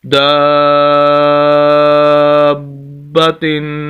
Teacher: غنہ ہوگا، ناک میں آواز جائے گی